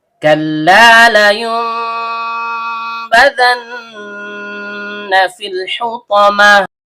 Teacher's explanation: Karena lamnya berharokat fathah diikuti alif layyinah, maka terjadi hukum bacaan mad tabi'i. Panjang 2 harokat dan setiap panjang keluar dari rongga mulut. · Bunyi nun sukunnya diganti menjadi bunyi mim sukun atau bunyi n diganti menjadi bunyi m disertai dengung. Dan setiap dengung keluar dari hidung. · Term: iqlab